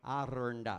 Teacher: And to say Aranda is hard enough as it is, because you have to roll an R and then it's Aranda. You go straight from a rolled R to a R, yeah?